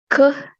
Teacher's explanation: a velar stop voiceless sound